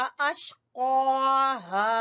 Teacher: क़ाफ मोटा पुर पढ़ेंगे, एक तो पुर पढ़ेंगे और जबान की जड़ से अदा होगा